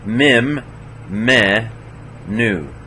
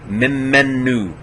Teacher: We have to hold the mem and the mem and the nu a little bit, noon a little harder, longer. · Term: doubling